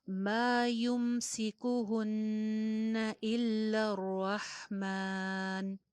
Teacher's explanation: یا پہ پیش ہے، کاف پہ پیش ہے، ہا پہ پیش ہے، ہر جگہ پہ آپ کے ہونٹ میکسیمم گول ہوں گے